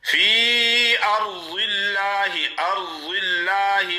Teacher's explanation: ضاد کا مخرج ہے اوپر والے داڑے 5، ان سے حافہ کا کنارہ لگائیں۔ حافہ وہ ہوتا ہے زبان کا کنارہ جو گالوں میں چھپا ہوا ہوتا ہے، یعنی جڑ والی سائڈ والی زبان کا جو سائڈ ہے وہی اس کو حافہ کہا جاتا ہے۔